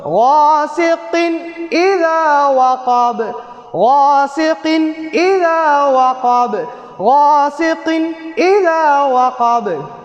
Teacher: அப்போ என்ன செய்யணும்? இந்த தன்வீனை வெளியாக்கி உன்னா இல்லாம ஓதணும். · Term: இல்ஹார சட்டம்